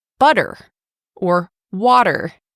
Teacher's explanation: our T's sound like flap T's or D sounds when they appear between vowel sounds